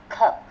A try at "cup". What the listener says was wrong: Cup luôn nha. hơi cúp một chút nha. Cup luôn. Mình đang đọc mà ráng em cup.